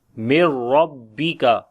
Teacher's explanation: Ra we read in heavy sound due to fatha sign on it · After the nun sakin there is ra. We make idgham without gunna. So we do not make gunna sound here, and mim directly we connect with the ra.